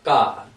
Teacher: K would just be ka, no breath coming out. So it's actually ka.